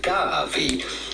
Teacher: well simply G insist on the first syllable gab and then the v in Italian is pronounced like a V not like in Spanish where it's pronounced like a b